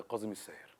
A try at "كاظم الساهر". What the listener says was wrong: كاظم الساهر مش قاظم الساهر، عشان كده